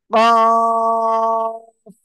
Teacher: উম, জিহ্বার গোড়ার থেকে, জিহ্বার গোড়া থেকে একটু আগে বাড়িয়া তার বরাবর উপরে তালুর সাথে লাগিয়ে মধ্যখান পেঁচানো কাফ চিকুন আওয়াজে চার আলিফ টানে উচ্চারণ হবে এবং শেষে হালকা বাতাস বের হবে · মোটা আওয়াজে চার আলিফ টেনে পড়তে হবে, আর শেষে হালকা বাতাস বের হবে